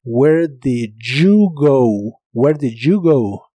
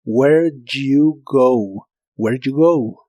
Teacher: Si las pronuncias rápido, esa D e Y suenan como j, como una SH vibrante. J. Where did you go?